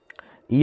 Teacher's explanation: य का उच्चारण स्थान है तालू